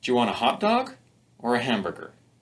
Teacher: if we want to show choice, we can use a rising and falling pattern.